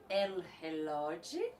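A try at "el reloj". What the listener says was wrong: Aqui de novo o R brasileiro, né, mais aspirado, mais para trás da garganta, e aí o J saiu como um J. Não sei de onde veio isso também, talvez por uma tentativa de...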